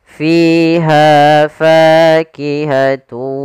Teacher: Kemudian pada lafal fa ini juga ada mad tabi'i, yaitu adanya fathah bertemu dengan alif. Usahakan panjangnya fiha fa harus sama